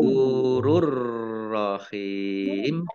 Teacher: Jadi masuk ke huruf ro, tapi tidak mendengung. Roknya dibaca double, ditandai roknya ada tasdidnya. · Hak kasroh ya sukun mat tobi'i, tetapi karena bertemu dengan huruf terakhir yang dibaca sukun karena wakof, maka menjadi mat arid lis sukun. Dibaca panjang boleh 6, boleh 4, boleh 2 harokat. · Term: idgham bila gunnah